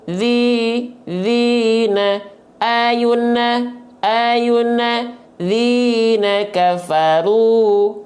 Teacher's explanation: kasrah ketemu Ya Sukun dua harakat diayun satu kali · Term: Mad thii